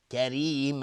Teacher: را ترقیق است چون کسره داره.